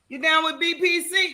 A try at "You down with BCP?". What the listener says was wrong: no, BCP. No, BCP. No, you said BPC. You down with BCP?